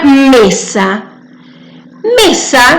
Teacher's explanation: el mayor énfasis cuando la pronunciamos está en me.